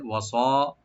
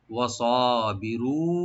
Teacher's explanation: ওয়া ওপেন রাখবেন, সোয়ারটাকে মোটা করে এক আলিফ টানবেন